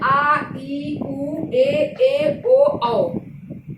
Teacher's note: जिसके उच्चारण में ह्रस्व से दुगुना समय लगे, यानी इससे ज्यादा समय लगे, उसे हम दीर्घ स्वर कहते हैं। जैसे ये 7 होते हैं। · आ बोलने में समय लग रहा है, औ बोलने में समय लग रहा है, ए बोलने में समय लग रहा है। तो ये जो है दीर्घ से ह्रस्व से दीर्घ में ज्यादा समय लगता है, इसे हम दीर्घ स्वर कहते हैं।